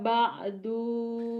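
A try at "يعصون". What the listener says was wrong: yaksu bukan ba'du, yaksu. Enggak ada titiknya.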